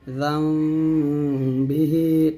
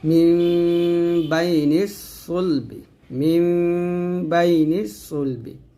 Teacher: দুই ঠোঁট মিলে করে গুণটা আদায় করতে হবে, তবে ঠোঁটের মাঝে একটা ফাঁকা রাখবেন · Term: ইকলাব গুণনা